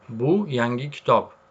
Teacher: Budan keyin ohang pauzasi boʻlyapti. Ya'ni o'zgarishi.